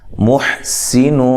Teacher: ہا کو واضح نکالنا ہے، سین کو باریک سیٹی سے، نون یا نون تنوین کا اخفا مع الغنہ ہے.